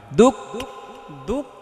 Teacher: দুক এটা হামস হবে, একটু এটা ছুটে যাবে, হালকা হালকা ছুটে যাবে, বাতাস বের হবে